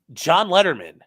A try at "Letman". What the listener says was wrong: you're adding you're adding a syllable